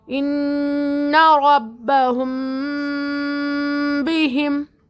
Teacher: میم کے بعد با ہے تو یہاں پر اخفا کرنا ہے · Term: اخفاء شفوی